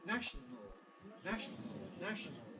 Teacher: National on the other hand if we omit the second schwar going straight from n to L keeping our tongue tip in place